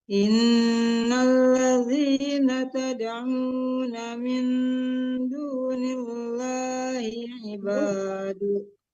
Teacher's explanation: Min dunillah itu lam Allahnya ditipiskan ya Bu, karena huruf sebelum lam Allah dia berharkat kasrah atau baris di bawah ya, lam Allahnya ditipiskan.